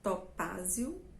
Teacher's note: os nomes dessas pedras são palavras paroxítonas já tá dizendo que a sílaba mais forte sempre vai ser a penúltima